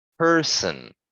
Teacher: my voice is like kind of putting more emphasis on the ER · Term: stressed